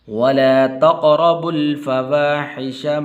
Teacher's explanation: اس با کو آگے لام کے ساتھ ملانا ہے